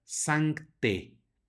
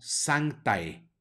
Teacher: cuando vemos en el latín a seguida de e la pronunciamos como e la a no suena de manera que esta palabra se pronuncia santé no santae sino